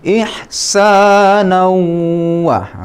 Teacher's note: Waw ini adalah salah satu dari idgham bi gunnah. Idgham artinya dilebur tanwinnya ke dalam huruf waw sehingga ini bertasdid. Kemudian kedua bi gunnah, dibaca dengan berdengung. Jadi dibacanya ihsanan wa.